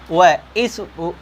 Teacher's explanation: वह जो बोला जाएगा वो कहाँ से बोला जाएगा? दंत और ओष्ठ से बोला जाएगा। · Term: दंतोष्ठ